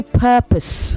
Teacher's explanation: You say purpose, not purpose. The second syllable contains the schwa sound.